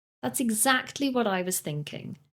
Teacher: we are stressing the word exactly